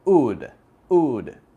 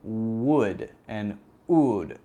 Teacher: And if you can see the difference between these two, would and ood, the lips look the same, but the difference is that when I say ood, the sound is actually coming from the back of my throat